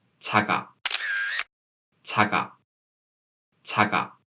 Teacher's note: In the same way, we don't read this word 작아 because the initial consonant of the second syllable is 이응, which is silent, and the syllable 작 ends with a prop consonant, 그 sound. So 그 sound moved to the position of 이응. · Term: linking